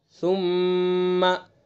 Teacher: मीम मुशद्दद है तो लिहाजा यहाँ गुन्ना होगा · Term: हर्फ गुन्ना